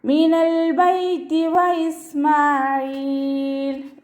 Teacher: വാവ് ഉച്ചരിക്കുന്ന സമയത്ത് ചുണ്ടുകളൊന്ന് വട്ടത്തിൽ പിടിച്ചിട്ട് ഉച്ചരിക്കുക. പല്ലിനെ ചുണ്ടിൽ തട്ടിക്കാതെ നോക്കുക.